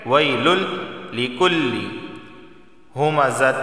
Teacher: تنوین کے بعد لام آیا ہے اور لام یہ حروف یرملون میں سے ہے، تو صرف یہاں پر ادغام ہوگا